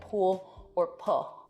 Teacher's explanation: that's an l turning into a vowel in a word like pool or pull